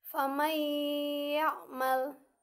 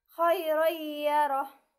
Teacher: Apabila nun mati atau tanwin bertemu dengan huruf-huruf idgham bigunah, maka cara membacanya adalah samar atau memasukkan nun mati atau tanwin ke dalam huruf hidup sesudah nun mati atau tanwin. Jadi, huruf nun mati atau tanwin tidak terdengar sama sekali. Hukum bacaannya wajib dibaca berdengung dengan memasukkan suara nun mati atau tanwin ke dalam huruf yang ada setelahnya.